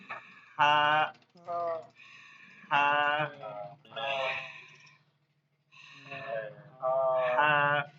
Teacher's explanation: সবাই এখানে আঙ্গুল দিয়ে নিজে নিজে বলেন কোথায় হলকের মধ্যখান থেকে হলকের মধ্যখান থেকে হালকা আওয়াজে বাতাস চলবে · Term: লম্বা হা